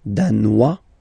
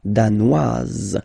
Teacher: Danois, don't pronounce the final S. Danoise, here you pronounce it.